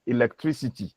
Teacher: For instance, when we take the word electricity, where the velar stop in electric actually assimilates to the alveolar fricatives in electricity. So, as you can see here, rightly transcribed here, you realize that the k at the end of electric changes to s in electricity. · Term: assimilation of manner